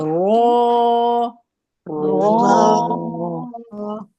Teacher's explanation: زبان کے کنارے کی پشت جب اوپر والے 3 دانتوں کے مسوڑے سے لگتی ہے تو را ادا ہوتا ہے